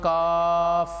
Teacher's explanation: اس میں قلقلہ نہیں ہوتا بلکہ اس کو باریک آواز میں پڑھا جاتا ہے، جیسے قوف اس کو پڑھا اور اس کو ہم پڑھیں گے کاف۔